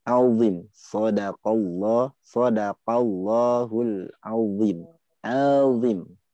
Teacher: Yang membedakan adalah terangkatnya pangkal lidah sampai menyentuh langit-langit. Itu itbaq. Ya, itbaq.